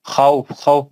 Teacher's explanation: खौफ, खौफ पे मद लीन आरिज हो जाएगा। खौफ में लीन है तो फा पे सुकून दे के मद लीन आरिज हो जाएगा